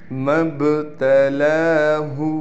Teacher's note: لام پر کڑا زبر ہونے کی وجہ سے لام کو ایک الف کی مقدار کھینچیں گے